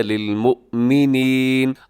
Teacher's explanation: حمزہ ہے بشکل واو تو اسے آپ جھٹکے کے ساتھ پڑھیے گا